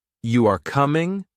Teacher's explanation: But if you say, You are coming, with a rising tone, it is a question.